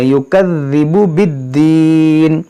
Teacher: دال مشدد ہے، اور دال کو دیکھیں نرمی سے ادا کریں